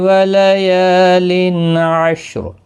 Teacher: یا الف مدہ ہے، 1 الف کی مقدار کے برابر کھینچیں گے